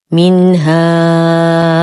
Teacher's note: منها نون ساكنة وبعدها حرف الها في كلمة واحدة، الحكم إظهار حقيقي مع غنة ناقصة